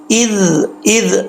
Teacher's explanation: زال نارمل پڑھا جاتا ہے بغیر سیٹی کے، اس میں سیٹی نہیں آتی، اگر سیٹی آتی تو سمجھیے زال کا مخرج جو ہے وہ صحیح طریقے سے نہیں پڑھا جا رہا، تو کیسے پڑھیں گے؟ · زبان کی نوک اوپر والے دانتوں کے کنارے سے لگے گی تو یہ زال پڑھا جائے گا